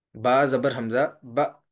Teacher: کیونکہ الف کے اوپر جزم آ گئی ہے، الف مجزوم ہے، جزم والا ہے، تو اس لیے یہاں پر جھٹکے سے پڑھیں گے اور جھٹکا لگتا ہے حمزہ میں۔ جس الف پر زبر، زیر، پیش یا جزم ہو وہ الف نہیں بلکہ حمزہ ہوتا ہے، لہذا اس کو حمزہ ہی پڑھائیں۔